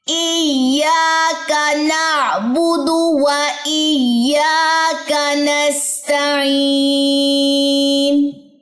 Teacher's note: ایاکا یا لمبا ہوگا، کاف لمبا نہیں ہوگا. نعبدو میں با اور دال آپ نے لمبے نہیں کرنے، یہاں پر بھی تشدید کی ادائیگی ہوگی.